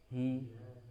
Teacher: Tapi dari pangkal tenggorokan hi ya. Langsung ke kasrah, tidak ada ke hei gitu. Hei, tapi hi langsung hi.